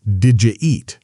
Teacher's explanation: did you is often blended into something closer to didja in very casual speech